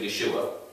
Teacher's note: what gets dropped in aramaic is the h the h sound is not necessary and it becomes yehoshua to